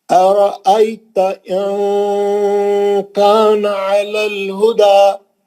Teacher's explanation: नून को छुपा रहा हूं यहाँ पे, आपको दिख रहा है नून का आवाज नहीं निकल रहा लेकिन गुन्ना निकल रहा। अच्छा, इख्फा का गुन्ना बोलते हैं उसको।